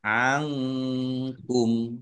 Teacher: Nun sukun bertemu dengan huruf kaf. Bacaan ikhfa dibaca samar-samar. Angkum. Kumnya dibaca wakaf dan pendek karena tidak ada tanda panjangnya.